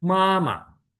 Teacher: So mama is mo, first tone, ma, pero yung second na ma is neutralized.